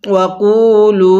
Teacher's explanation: আমি কপের মধ্যেও টান দিছি, লামের মধ্যেও টান দিছি, কারণ দুটোটা হরফের মধ্যে টানের অপশন আছে।